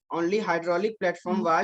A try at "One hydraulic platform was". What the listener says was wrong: Only नहीं है, one है. थोड़ा patience में बताइए, बोलिए, ठीक है.